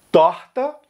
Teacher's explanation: Rio de Janeiro, Minas Gerais, Bahia, Pernambuco e Ceará vão usar o R mais raspado